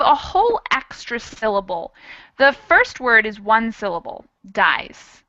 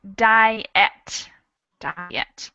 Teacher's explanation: we add the sound i in diet so we have a whole extra syllable